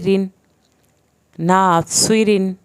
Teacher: अच्छा, रा के नीचे दो ज़ेर हैं, रा के नीचे एक ज़ेर आएगी या दो ज़ेर आएंगी। ज़ेर की सूरत में रा जो है वो पुर नहीं किया जाएगा, रा पतला पड़ा जाएगा।